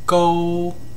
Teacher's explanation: starts at five and ends at five. It's flat. The pitch doesn't change.